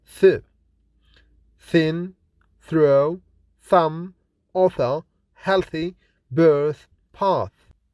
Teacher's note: made with a partial closure or narrow opening using the upper front teeth against tongue tip the soft palate is raised the consonant is voiceless and fortius · The soft palate is raised. The consonant th is voiceless and fortis.